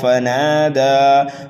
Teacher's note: فا کو جلدی پڑھیں گے، نون اور دال کو ایک الف کے برابر کھینچ کر کے پڑھیں گے، یہاں پر بھی وقف بالسکون ہوگا۔